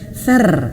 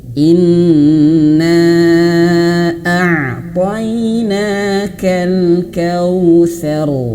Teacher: di sini ro-nya ditebalkan, seru. Kenapa tebal? Karena huruf ro-nya sukun ya. Sebelumnya dia ada berharokat fathah nih.